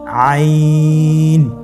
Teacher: আইন হরফটি উচ্চারণের সময় অবশ্যই তিন আলিফ টেনে পড়তে হবে। এখন আইন হরফটি বারিক হরফ।